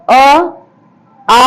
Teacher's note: अ आ का उच्चारण स्थान कंठ होता है